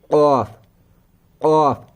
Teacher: जब हम औफ पढ़ते हैं जुबान की जड़ उठकर तालों के नरम वाले पार्ट से लग जाती है, औफ अदा हो जाता है पुर वाला कौफ।